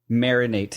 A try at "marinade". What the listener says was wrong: It's marinade. It's not marinate. it's D.